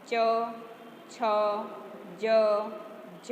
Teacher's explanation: આપણે જ્યારે બોલીએ ચ, છ, જ, જ, તો આ જીભ બોલાય એ ત્યારે આપણે આપણી જીભ તાળવાને અડે એટલે તાલવ્ય કહેવાય